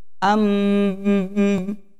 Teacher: Hurufnya ada dua, yaitu nun dan mim yang bertasydid, ya, dibaca gunnah. Harus masuk ke hidung.